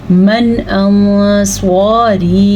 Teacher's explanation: اخفاء کا قاعدہ ہو رہا ہے کیونکہ نون ساکن کے بعد سواد حروف اخفاء میں سے ہے، پھر مد آ گئی ہے، ساتھ یا مدہ بھی ہے، تو یہ 4 حرکات عربیہ کے برابر ہو گئی۔